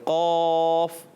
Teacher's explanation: زبان کی جڑ اور تالوں کے نرم حصے سے. زبان کی جڑ اور تالو کا نرم حصہ.